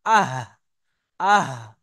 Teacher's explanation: যেমন হা কে আপনি নেন, হা কে সাকিন করেন, আর শুরু থেকে একটা হামজা জবর নিয়ে আসেন, হামজা, হা জাবার আহ, আহ, তো ওই যেখানে গিয়ে আওয়াজটা লাগছে ওটাই হলো আমাদের উচ্চারণের উৎপত্তি স্থল। তাহলে হাটা আর হামজাটা উচ্চারণ হয় কণ্ঠনালী বা গলার শুরু ভাগ হতে।